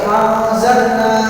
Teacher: nun ketemu zain, maka dia mendengung, nunnya tidak jelas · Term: ikhfa awsat